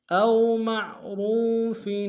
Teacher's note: را کو واو کے سامنے لیں گے، واو مدہ ایک اندام میں کھینچیں گے